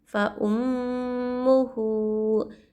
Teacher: الٹا پیش کو ایک الف کی مقدار کھینچنا چاہیے